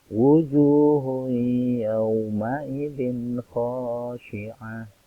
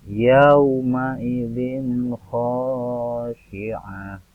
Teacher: Kha merupakan salah satu huruf idhar khalqi. Jadi yauma idzin khasyi'ah ini dibaca jelas tanpa mendengung.